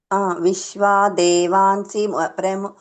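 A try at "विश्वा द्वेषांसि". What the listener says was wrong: ఆ దేవాన్సి అంటున్నారు కదా ద్వేషాన్సి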